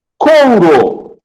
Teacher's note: Intenção de W, né? Então, o O é vogal e o U é semivogal